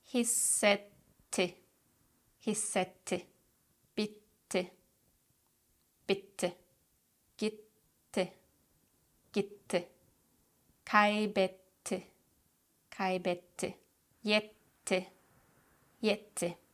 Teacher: we don't tap our double T's. Instead, we put a pause in between and we pronounce both T's very clearly